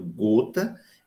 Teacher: Mas quando eu digo gota, esse G de gota é o mesmo G com um Wzinho em cima, né? Mostrando o arredondamento